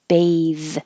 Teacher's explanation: when it has the e at the end then the th is voiced and the vowel is the long vowel sound a